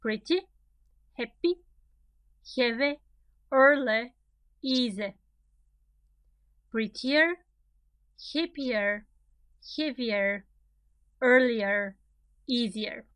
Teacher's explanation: You see where the stress is in all of these adjectives? On the first syllable.